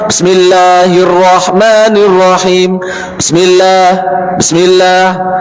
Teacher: Nah, sin mempunyai kewajiban untuk dialirkan karena dia rokhwah.